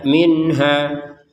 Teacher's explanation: minhanya nun sukun bertemu ha kita baca dengan jelas. Kalau yang di atas nun sukun bertemu ta ini samar, kalau ini dibaca dengan jelas.